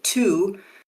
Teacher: you should feel that the vibration only comes on for the ooh sound.